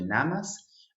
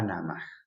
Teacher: esa S se convierte en bisarga, se debilita, es un sonido más suave. Pasamos de namas a namaj.